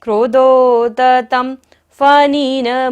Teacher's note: त के ऊपर बिंदी है और बाद में क्या है फ, तो बिंदी का उच्चारण क्या होगा म। क्रोधोदतम फनिन मुत्फन मापतंतम आक्रामतिक, स्वरघात हो रहा है, मिश्रित अक्षर है।